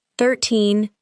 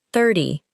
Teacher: The stress is different. In 13, the final part is usually stronger. In 30, the first part is usually stronger.